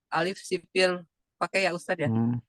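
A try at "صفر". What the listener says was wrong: Sifar. Alif sifar. Sifar. Bukan sipir. Alif sifar mustadir.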